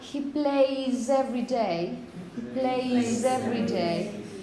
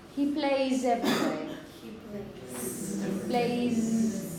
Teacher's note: The trick is not to make a very strong s. No. The key is to make it voiced.